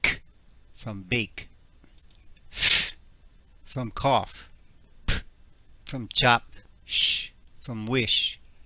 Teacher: You should feel no or very little vibration in your throat. Or if you put your hands over your ears, you should hear very little or no vibration.